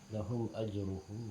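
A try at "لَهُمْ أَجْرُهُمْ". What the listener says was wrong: Lahum ajruhum, ada lahum a dibaca lahumu ajruhum.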